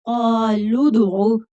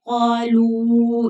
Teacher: لام کے اوپر پیش ہے اور دال ساکن ہے تو ہم لام کو دال کے ساتھ ملا کر پڑھیں گے ، قالوا ادعو، لام کو کھینچنا نہیں ہے، قالو نہیں پڑھنا